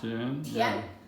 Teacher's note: This one is T, E, An, Tian. That's the second tone. Okay, it's going up.